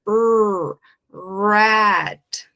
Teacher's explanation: R é aquele R de um gargarejo bem caipira, aquele som que sai lá do fundo da garganta.